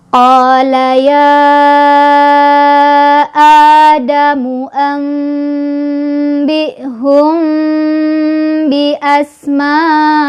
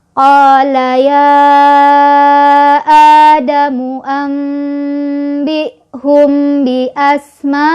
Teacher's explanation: Mimnya dibaca samar sambil berdengung. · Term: hukum ikhfa syafawi